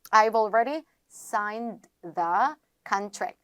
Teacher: D랑 T랑 사운드가 비슷하니까 앞에 있는 걸 탈락시켜 주시면 되겠습니다